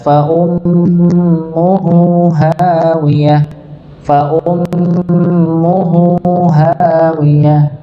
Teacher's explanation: huruf haknya yang dhammah ini dibaca dua harakat